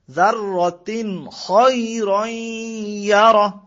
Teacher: এই খ শব্দটা আসলে নুন সাকিন এবং তানবিনের পরে, তাহলে এটা গুণ্য ছাড়া স্পষ্ট করে পড়তে হবে, গুণ্য হবে না। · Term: এজাহারের হরফ